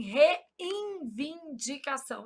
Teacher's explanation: A gente nasaliza esse N na pronúncia. A gente fala assim, reivindicação.